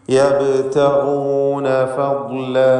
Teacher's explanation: യബ്തഗൂന എന്ന പദത്തിൽ ബാഇന് ഖൽഖല സുഗ്റ നൽകി ശബ്ദം ഹറക്കത്ത് പോലെ ചലിപ്പിക്കണം. യബ്തഗൂൻ, ഇതിലുള്ള ഗൈനിന് ഇസ്തിഅലാഇൻ്റെ അക്ഷരമായതുകൊണ്ട് തഫ്ഖീം കൊടുക്കുക, തടിപ്പിക്കുക.